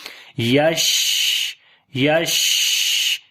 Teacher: شین کے اندر سانس جاری ہو رہا ہے اور آواز منہ کے اندر پھیل رہی ہے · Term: صفت ہمس